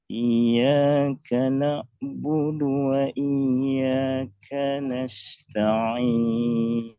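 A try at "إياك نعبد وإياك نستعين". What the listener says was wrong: Kanas sinnya agak sedikit deres tadi keluar desisnya. Kanasta'in. Bukan shin. Sin. Ya, sebenarnya huruf sin ini dekatnya bukan dengan shin, Pak. Sin ini dekatnya dengan dengan sod. Jadi kalau desisnya agak besar, maka jadinya sod, bukan sa.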